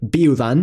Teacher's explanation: The falling diphthong <iu> is pronounced as [iw], something like the English “ew”.